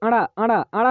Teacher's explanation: अड़ा दोस्तों हमारा जो बोला जाता है ये मूर्धा से बोला जाता है